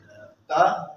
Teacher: है उसका जो मसूड़ा होता है उसके साथ टच करते है जुबान की नोक ऊपर वाले दांतों के मसूड़े से लगती है